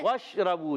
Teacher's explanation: होठों की गोलाई से। वशरबू शीन अदा होता है। वस्ते जबान वस्ते तालु से।